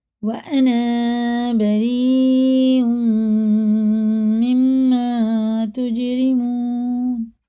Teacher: را ساکن را کے نیچے زیر ہے تو یہ باریک پڑھیں گے